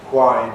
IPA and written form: hwaɪn (whine)